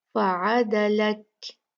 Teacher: کاف کو ہم نے ساکن دینا ہے رکنے کی وجہ سے، تو ہم یہاں پر جو کاف کی صفت ہے ہم اس کو ہم واضح کریں گے۔